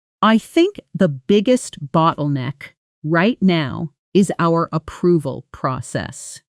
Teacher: Notice how bottleneck gets extra emphasis, extra volume, a slightly higher pitch because it's the key piece of information in [clears throat] the sentence. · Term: sentence stress